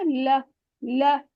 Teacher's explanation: ऊपर के दांतों की जड़ से थोड़ा पीछे पीछे हम जबान को लगाएंगे